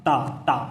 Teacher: दंत में जीभ दांतों पे लगती है